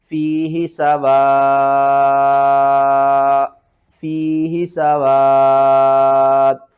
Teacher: اس مد کو ہم نے کھینچ کر حمزہ کے ساتھ ملانا ہے